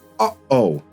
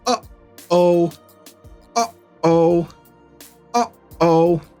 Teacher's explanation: your vocal cords, you close them and you trap the air so it can't escape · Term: glottle stop, glottal stop